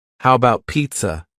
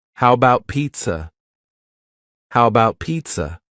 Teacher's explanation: the first a in the word about is gone it's just missing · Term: reduction